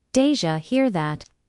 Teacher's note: did you becomes deja. These reductions make English faster and more natural